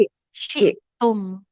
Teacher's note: Oh ya ya. Nah, ya, tengah lidahnya menempel ke langit-langit atas ya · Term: huruf syin